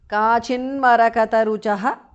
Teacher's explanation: The t in the end changes to n because of sandhi.